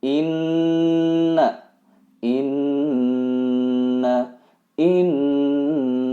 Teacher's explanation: Inna ini adalah guna harus ditahan 2/3 harokat kemudian didengungkan yaitu terasa mendengung di area bagian hidung atas